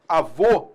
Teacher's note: A gente tem o acento circunflexo, avô, para marcar um timbre fechado